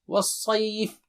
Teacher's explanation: وا باریک ہے، صاد موٹا اونچا ہے، وص اس کے بعد صی صیف نہیں، والصيف.